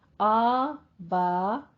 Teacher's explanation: आ मुंह खोल के अदा कीजिए, 2 काउंट करना है, लेकिन बा में क्या है, अलिफ मद्दा के फौरन बाद हमजा, एक ही कलिमा में मद्दे मुत्तसिल वाजिब, इसको 5 काउंट करना है।